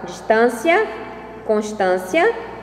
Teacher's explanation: a partir da vogal tônica, há uma semelhança completa entre os sons, tornando a rima soante